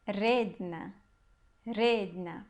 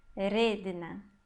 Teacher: Perceba que a sílaba forte aqui é o re